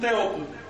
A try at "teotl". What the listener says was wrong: Con una O más cerradita, más aguda, Teot. Pero no como Teot.